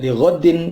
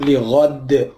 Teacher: Kalau diwakafkan, maka tidak li ghaddin, tapi dalnya menjadi mati, dibaca qalqalah.